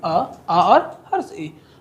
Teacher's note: निर्नुनासिक या मौखिक स्वर उसको बोलते हैं जिसमें हवा केवल मुंह से निकलता है, जैसे कि आ और हर्ष ई।